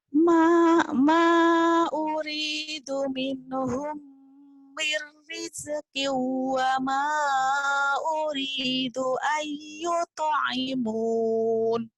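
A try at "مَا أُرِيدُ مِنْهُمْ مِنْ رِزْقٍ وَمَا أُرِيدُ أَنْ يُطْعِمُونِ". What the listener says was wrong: Iya.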